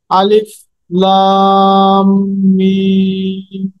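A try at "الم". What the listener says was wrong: আর আরেকটু লম্বা হবে, দেখেন 4 আলিফ মাদ দেয় না, আরেকটু লম্বা হবে। মাশাআল্লাহ, দেখেন, আলিফ লাম।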